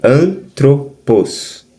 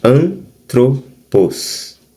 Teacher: Então o ni ele aparece como uma consoante final na sílaba e então ela não separa